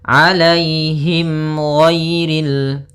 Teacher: mim mati bertemu dengan huruf ghain, maka dinamakan dengan izhar syafawi. Maka harus jelas suara mimnya